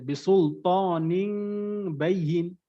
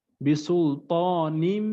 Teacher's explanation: নুন সাকিন বা তানভীন কে মিম দ্বারা পরিবর্তন করে গুন্না করতে হবে